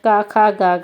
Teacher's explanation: का, खा, गा, घा का उच्चारण स्थान कंठ है।